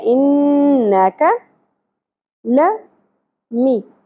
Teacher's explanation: کاف باریک ہوگا اور زیادہ نہیں کھینچیں گے، ایک ہی زبر ہے.